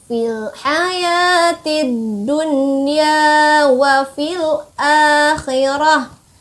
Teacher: Dunya. Nah, ada alif di sana, itu namanya mad tobi nih. Dibaca 2 harokat.